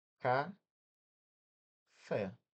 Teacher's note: Fé, a última levou mais tempo para pronunciar. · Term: oxítona